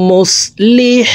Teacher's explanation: হাকে হালুকের মধ্যখান থেকে উচ্চারণ করব। কারণ হার মাখরাজ হালুকের মধ্যখান থেকে হবে।